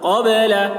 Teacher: نون کی آواز کو ناک میں لے جا کر چھپا رہے ہیں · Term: اخفا